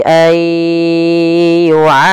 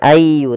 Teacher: Kemudian pada lafal ayyu'ammar ada bacaan idgham bi gunnah, yaitu memasukkan nunnya kepada huruf ya dan ditahan